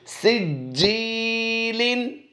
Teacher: جیم پر ہم نے جماؤں کے ساتھ قلقلہ کیا ہے اور جیم یا سے جی کو یا مدہ کرتے ہوئے ہم نے لمبا کیا ہے